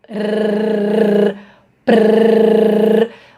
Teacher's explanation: isso nada mais é do que uma vibração de ponta de língua